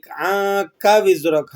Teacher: عَنْكَ نون ساکن ہے تو یہاں پر آپ نے اخفا کرنا ہے، اور کاف کو کھینچنا نہیں ہے